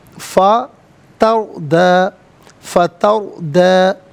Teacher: را ساکن ماقبل تا پر زبر، را ساکن کو پر کر کے پڑھا جائے گا